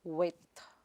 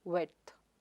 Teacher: You don't pronounce the d sound there. It's silent,